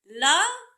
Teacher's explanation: गांव सांप आदि पार्श्विक व्यंजन क्या है ल पार्श्विक व्यंजन है ल का उच्चारण करते समय हमारी सांस जीभ के बगल पार्श्व से गुजरती है